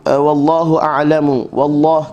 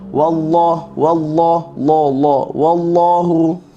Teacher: kalimah Allah dibaca dengan tebal sebab sebelumnya waw bagi atas.